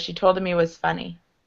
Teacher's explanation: the more quickly you say it the more your h's disappear